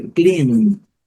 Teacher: A segunda palavra é clean, destaque para a letra N, que é também um pouco prolongada